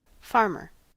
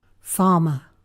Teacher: Rhotic versus non-rhotic is the technical terminology, but you may have heard the expression dropping the R.